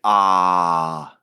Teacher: About in the middle of the mouth, you get ah.